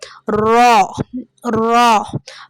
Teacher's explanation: ஆனா ரா வல்லினமா நம்ம உச்சரிக்கும் போது நம்மளுடைய ரெண்டு உதாடுமே வந்து ஓ வடிவத்துல மாறிடும்.